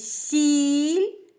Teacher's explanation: у слові сі Іль звук і Це голосний пишемо літеру І пригадуємо що звук і пом'якшує попередній приголосний у даному випадку сц нас звук у слові сіль звук ль